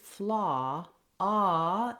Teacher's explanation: ah is an open back lax rounded vowel what that means is i'm not saying an o here if